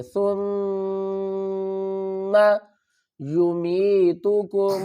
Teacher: میم کے اوپر غنہ کریں گے، میم مشدد ہے، سا کو نرمی سے ادا کریں گے۔